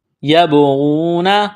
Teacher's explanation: با ساکن ہے، با کے اوپر جزم ہے تو با پر قلقلہ کریں گے